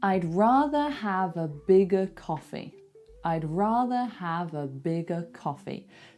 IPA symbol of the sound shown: ə